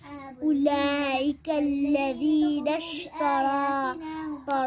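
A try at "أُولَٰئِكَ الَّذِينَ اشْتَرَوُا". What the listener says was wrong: را آپ کا اٹھ رہا ہے, نہ اٹھائیں. لام کا مد پورا کریں. یہ والا.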